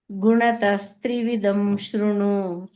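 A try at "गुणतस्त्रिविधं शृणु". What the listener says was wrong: ಹ ಧ ಮಹಾಪ್ರಾಣ ಹೇಳಿ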